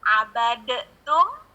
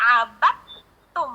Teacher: Jadi pindah, kita lompat ke taknya. Jadi yang asli tulisannya adalah abadetum, tapi dibaca abattum, langsung ke taknya. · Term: idgham mutajanisain